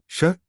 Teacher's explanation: इसका उच्चारण जीभ को पीछे मोड़कर किया जाता है। इसे मूर्धन्य श कहते हैं।